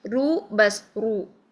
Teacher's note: پر کا مطلب ہوتا ہے موٹا پڑھنا، لیکن اس کو اتنا پر نہ کریں کہ ہونٹ گول ہو جائے، یعنی رو ایسے نہ کریں، رو بس رو، ٹھیک۔